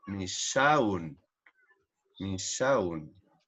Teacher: Porque al final de la palabra puede sonar como U o como O. La S es una S fricativa, o sea que es una S que bota aire.